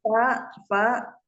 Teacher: bibir bawah bagian dalam yang basah bertemu dengan ujung gigi seri atas